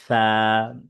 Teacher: সা হচ্ছে জিহ্বার আগা সামনের উপরে দুই দাঁতের আগার সাথে লাগবে।